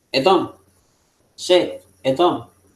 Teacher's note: Es mucho más reducida esta E. Como vemos, va declinando el sonido de la E. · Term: Hataf Segol